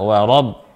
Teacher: Ra-nya tebal, wa ra, wa-nya tipis, ra-nya tebal, wa rab, bukan warab, ya.